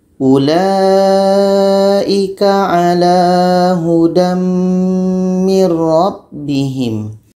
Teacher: Mim ini adalah huruf idgham bi gunnah. Jadi bunyi tanwin ini kita masukkan kepada mim.